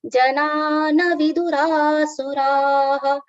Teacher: Janana vidura will be wrong. Na should be very quick because it is with the short sound.